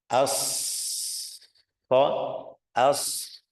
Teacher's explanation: udaranya mengalir hams, tapi sampai ada suara. Itu namanya safir.